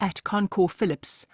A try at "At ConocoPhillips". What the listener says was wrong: I think the syllables are there, but some of them are rushed and just really rushed, so we're not hearing them.